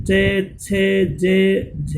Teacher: इस प्रकार की ध्वनियां जिनका उच्चारण करते समय जीभ का अग्रभाग तालु को स्पर्श करता है, तालव्य ध्वनियां कहलाती है।